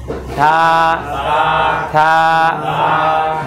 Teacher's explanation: আমাদের জিহ্বার আগা আর সামনের যে দুই দাঁত এই দুই দাঁতের আগা এই দুইটা এক জায়গা হবে। থা থা জিহ্বা বের করেন।